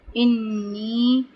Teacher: انی یہاں پہ نون مشدد ہے، اس پہ غنہ کریں گے 1 الف برابر